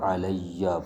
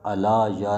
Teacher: ضروری ہے یہاں پر یا کو یا میں ادغام کیا جائے گا ، علیہ پڑھا جائے گا، علا یا نہیں پڑھیں